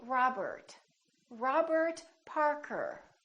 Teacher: curl your tongue and pull it back and make a strong R